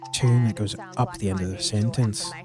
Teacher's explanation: Australians will often but not always speak with a tune that goes up at the end of a sentence even if it's not a question.